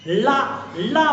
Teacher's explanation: हवा जीव के दोनों छोरों से निकल जाती है · ला ला बोलते आप तो देखिए मसूड़ों को क्या करेगी, ये ला बोलते समय जीभ छुएगी और जीभ जब फोल्ड हो जाती है ला तो हवा जीभ के दोनों छोरों से निकल जाती है। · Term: पार्श्विक वर्ण